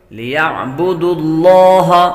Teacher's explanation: لفظ اللہ کے لام سے پہلے حرف پر پیش ہو تو لفظ اللہ کے لام کو پر پڑھتے ہیں۔ ليعبدوا الله مخلصین خا حروف مصالحہ میں سے ہے، صاد بھی حروف مصالحہ میں سے ہے، دونوں کو پر کر کے پڑھیں گے۔